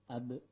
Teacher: Huruf ba termasuk ke dalam kategori huruf qalqalah, yaitu huruf yang ketika sukun dibaca memantul.